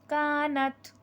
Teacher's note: نت میں ہمس ہوگا، اس میں سانس جاری رہے گی لفظ کو پڑھتے ہوئے